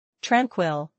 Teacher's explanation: Tranquil with emphasis on the first part.